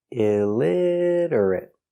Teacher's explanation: illit illiterate illiterate stop T at the end illiterate illiterate illiterate four syllables stress on the second syllable illiterate stress on lid illiterate illiterate he cannot read he is · 4 syllables. Stress on the second syllable.